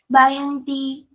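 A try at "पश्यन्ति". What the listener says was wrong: Not ba. It's not ba, it is pa. Payanti.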